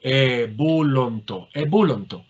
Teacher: En vez de ontai tendremos onto, con el acento en el diptongo